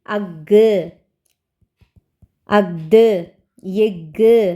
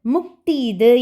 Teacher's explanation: இச்சொற்களில் உள்ள ஆயுத எழுத்து தனக்குரிய அரை மாத்திரை அளவிலிருந்து குறைந்து கால் மாத்திரை அளவில் ஒலிக்கிறது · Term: ஆயுத குறுக்கம்